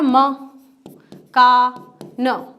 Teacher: तो मैंने म में जल्दी से बोल दिया, कम समय लगा इसलिए एक मात्रा, का ज़्यादा समय लगा इसलिए 2 मात्रा, न ज़्यादा कम समय लगा इसलिए 1 मात्रा।